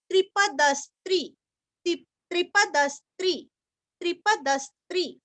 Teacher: त्रिपद यहाँ का द भी पूरा पढ़ना है और द के ऊपर आघात